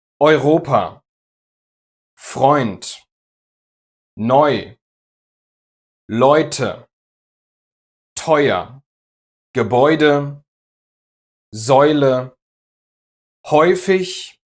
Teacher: It's very similar to how you say boy or oyster in English, but instead of landing on an open i, boy, you land on a rounded ü, which is the short ü we talked about in the last video. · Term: oi